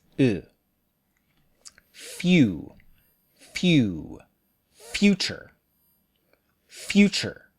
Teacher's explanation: make sure to use the back vowel ooh not the Japanese